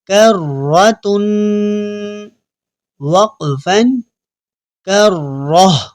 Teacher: وقف کرنے سے پہلے تا پڑھیں گے اور وقف کرنے کے بعد ہم اس کو ہاں میں بدل دیں گے